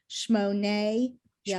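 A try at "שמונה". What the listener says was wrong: Shmona. There's an ah here.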